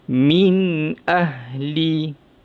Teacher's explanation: Kena baca dengan jelas, nyata dan terang, tanpa dengung. Tidak dengung. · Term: izhar halki